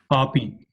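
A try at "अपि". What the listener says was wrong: This is a short vowel a. Api, not api.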